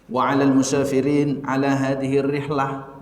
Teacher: Kalau ketemu Mesir, kemudian antara Saudi dengan Mesir, kalau Saudi itu biasanya harokat belakangnya nggak dibaca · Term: langsung disukunkan